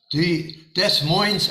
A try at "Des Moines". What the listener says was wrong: Des Moines. The S's are silent.